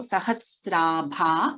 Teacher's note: Sahasrabha, sa and r, and we have the dirgha also. Sahasrabha, bha is a Mahaprana.